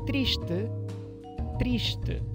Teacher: esse s antigo palataliza e vira sh, e o e final e, triste.